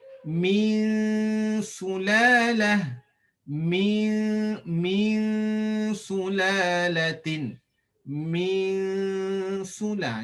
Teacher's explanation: Kita senang je baca ikhfa ni, tak perlu kita sentuh hujung lidah pada langit-langit dan dengungkan